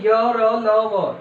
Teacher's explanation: य का उच्चारण क्या होगा, तालु, और र का क्या होगा, दंतमूल, ल का क्या होगा, दंतमूल, व का क्या होगा, ओष्ठ होगा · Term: अंतस्थ व्यंजन